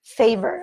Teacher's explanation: And the R in English is a strong R. In American English, it's always a strong R. And you get that from the back of your mouth.